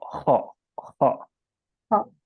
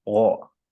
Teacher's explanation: Di wo tuh nggak ada hams. Jadi udaranya tidak mengalir kalau wo.